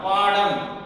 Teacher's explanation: பாடம் பாத்தீங்க அப்படின்னா இம் என்கின்ற எழுத்து தன்னுடைய மாத்திரை அளவு குறையாமல் ஒலிக்கிறது